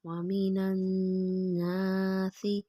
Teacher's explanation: نون مشدد پہ غنہ کریں گے، آواز کو نا کے نرم والے حصے میں رکھ کر۔